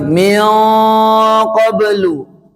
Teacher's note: Kenapa bisa tebal? Karena huruf qaf tebal, nun ketemu dengan huruf tebal qaf, maka dengungnya jangan tipis, jadi ikut tebal. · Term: ikhfa tebal